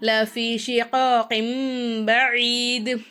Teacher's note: தன்மீனுடைய குறியீடையும் சுக்குன் பெற்ற நூனையும் மீமா மாற்றி நம்ம உச்சரிக்கணும். அப்போது ஷிகாகிம் பஈத், கின் அப்படின்னு சொல்லாமல் கிம் அப்படி சொல்லணும்.